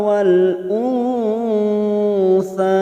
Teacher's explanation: Wal nun sukun bertemu sa namanya ikhfa hakiki. Kita samarkan bunyi nun sukun 3 harokat.